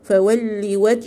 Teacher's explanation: اللام هنا مشددة فانطقيها كأنها حرفين ساكن متحرك